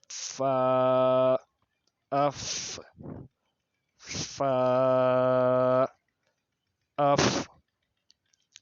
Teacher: جب اوپر والے 2 دانتوں کا سرا نیچے کے ہونٹ کا اندرونی حصے سے ملاتے ہیں تو اس وقت فا ادا ہوتا ہے